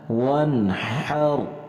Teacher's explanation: یہ جو جیم کی شکل کا ہا ہوتا ہے یہ ہا نہیں ہوتا، اسے گلے سے ادا کرنا ہے، حلق سے ادا کرنا ہے